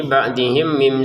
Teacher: ba'dihim mim sukun bertemu mim dibaca dengan dengungan, ya, dimasukkan kepada mim yang kedua